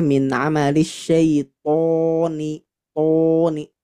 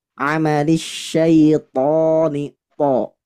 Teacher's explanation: Jadi harus tebal membacanya tanpa mencucu. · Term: ta versi tebal